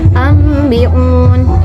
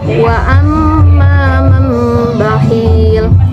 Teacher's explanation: Adapun cara pengucapan yang benar dalam mengikhfakan mim qalb atau iqlab pada huruf ba adalah dengan menerapkan atau menutup dua bibir tanpa mengerutkan, tanpa menekannya dengan disertai gunnah